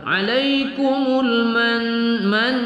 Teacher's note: kita baca nun bertasydid wajibul ghunnah